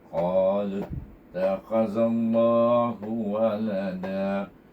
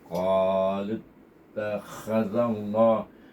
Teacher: Kalau kita baca qalu saja, kita baca dengan dua harakat qalu, tapi oleh kerana kita bertemu dengan alif lam syamsiah, maka hendaklah kita idgham samsikan lam baris waw itu kepada huruf ta